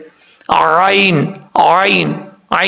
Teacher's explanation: عین کو پڑھتے وقت عین کو مخرج سے نکالنا ہے، یہ حلق کے درمیان والے حصے سے ادا ہوتی ہے